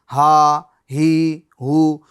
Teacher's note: हां दरमियान हल्क से अदा करनी है।